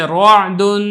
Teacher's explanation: اب تینوں کی مثالیں دیکھ لیں، جیسے رعد، اب یہ دیکھیں را حرکت ہے، حرکت فتح کی ہے تو میں نے اس کو پر کر کے پڑھا ہے